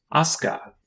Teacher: it makes an unrounded low back vowel sound like the a in father